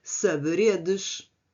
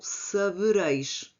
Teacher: Este fenómeno é frequente em português, sobretudo na supressão do D intervocálico. Havia muitas palavras que nós escrevíamos o o D intervogais presente em formas antigas como saberedes que se tornou sabereis porque o dia caiu.